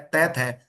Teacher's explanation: त थ तो इनमें कोई भी कंपन नहीं हो रहा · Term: अघोष